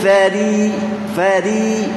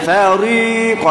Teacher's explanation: huruf ra baris bawah kita akan baca dengan tipis